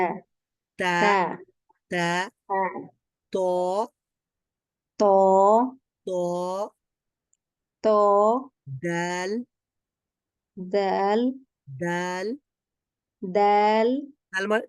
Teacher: দাল দাল দাল দাল তার মানে আমরা বুঝতে পেরে গেছি যে জিহ্বার অগ্রভাগ এটা সামনের উপরের দাঁতের গোড়ার সঙ্গে লাগছে বা উপরের দাঁতের মাড়ির সঙ্গে লাগছে